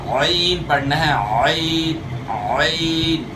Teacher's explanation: یا جو ہے اس کی مشق کرنے کے لیے جو ہے کپڑا نچوڑنے کی مثال آپ لے سکتے ہیں، اور آپ محسوس کریں گے کہ گلے کا درمیان استعمال ہو رہا ہے